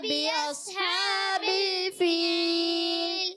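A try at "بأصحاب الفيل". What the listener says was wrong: अच्छा, बिअस नहीं करना, बिअस यानी सौद को आपने मोटा रखना है। बिअस्हाबिल फील,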